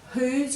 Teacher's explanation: Lose, whose, just have a look in whose, you've got the W-H there. So if you say whose, you can feel the air after the W, so you know there's an H there.